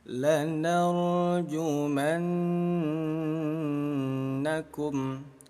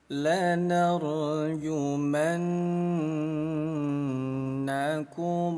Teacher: Nah, cara bacanya bunyi nun kita dengungkan dua ketukan. Lanarjumanakum diketuk dua kali. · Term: ghunah musyaddadah, gunnah musyaddadah